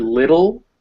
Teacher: that's a schwa before an l